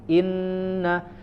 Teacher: Inna itu harus langsung ditekan ke huruf nun makhrojnya berpindah dari makhraj Alif ya Hamzah ke huruf atau makhraj huruf nun Inna jadi jangan dipanjangkan dulu i-nya innalladzinaka Inna nah ini Isba